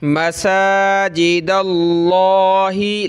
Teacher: लफ्ज़ अल्लाह है, इससे पहले दाल पे ज़बर है तो लफ्ज़ अल्लाह को मोटा करेंगे।